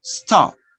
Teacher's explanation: Sometimes you don't hear the sound pa or ba clearly at the end of a word.